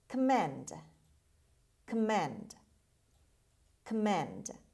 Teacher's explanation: o after c is pronounced as schwa command and the stress is on the second syllable on m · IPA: /kəˈmend/